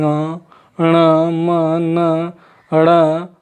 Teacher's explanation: नाक और मुंह दोनों से बोली जाती है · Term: नासिक व्यंजन